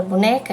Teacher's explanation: boneca que é na penúltima sílaba é paroxítona a sílaba tônica é a penúltima sílaba